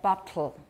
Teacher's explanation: that would be a syllabic L, because there's no vowel there at all. My tongue does not leave the alveolar ridge at all from the T.